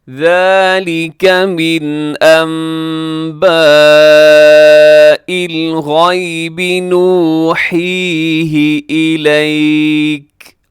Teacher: یہاں نون ساکن کے بعد با ہے، تو یہاں اقلاب ہوگا، نون کو ہم میم سے چینج کرتے ہیں